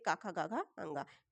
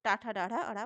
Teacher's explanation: स्पर्श व्यंजन वे जो कंठ, तालु, मूर्धा, दंत और ओष्ठ सभी स्थानों के स्पर्श से बोले जाते हैं। जैसे का वर्ग कंठ से काखा गाघा अंगा, चा वर्ग तालु से चाशा जाझा इया, और टा वर्ग टाठा डाढ़ा अड़ा मूर्धा से।